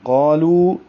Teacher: قالو قاف کو بھی 2 حرکات لمبا کریں گے اور قاف کو موٹا پڑھیں گے اور لام کو باریک کریں گے